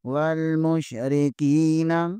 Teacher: یہاں پر را کے نیچے زیر ہے، اسے بریک پڑھیں گے، کاف زیر کے آگے یائی مدہ ہے، اسے ایک الف کے برابر کھینچیں گے